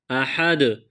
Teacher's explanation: جیسے یہ لفظ قرآن مجید میں سورہ اخلاص میں بھی آیا ہوا ہے، قل هو اللہ احد، وہاں پر جس طرح وقف کرتے ہیں یہاں بھی اس کو اسی طرح پڑھیں گے، احد۔ اور دال جو ہے حروف قلقلہ میں سے ہے، تو جب اس پر وقف کریں گے تو یہاں قلقلہ بھی کریں گے